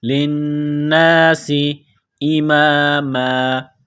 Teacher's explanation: نون مشدد ہے، غنہ کریں گے، آواز ناک میں چھپائیں گے، سین میں سیٹی کی آواز پیدا کرنی ہے، سین کو باریک کرنا ہے